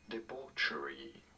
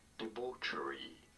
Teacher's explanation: You do want to stress on the second syllable